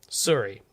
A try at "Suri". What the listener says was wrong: No. Siri with a U.